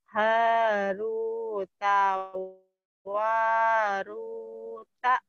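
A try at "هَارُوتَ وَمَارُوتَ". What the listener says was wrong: Waruta, wamaruta, banyak ketinggalan. Haruta, wama. Haruta, wamaruta. Haruta wa maruta.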